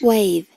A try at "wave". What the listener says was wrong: Không phải có chữ nào, letter V này, vờ, ending sound, âm cuối đấy.